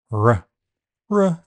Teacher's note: allowed to escape throughout the sound it is vow like R the vocal folds vibrate throughout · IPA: /r/